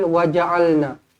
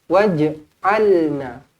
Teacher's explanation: Qalqalah sebenarnya di sini. Bukan jim baris atas tetapi jim baris mati.